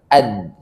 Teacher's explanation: Ada pembenturan antara ujung lidah dengan gusi seri atas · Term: dal